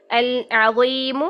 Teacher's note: یہاں پر بھی ضا موٹا ہی رہے گا، زبان کی جڑ اور وسط اٹھا کے رکھیں گے